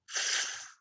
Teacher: our teeth on our lip are getting in the way and our vocal cords aren't engaged that's unvoiced but keep your teeth on your lip in the same position